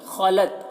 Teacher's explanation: خا کو پر پڑھنا ہے، لت تا میں قلقلہ نہ ہونے پائے اس کا خیال رکھنا ہے